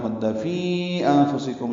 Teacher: انفسکم میں نون ساکن کے بعد فا آنے کی وجہ سے اخفا ہے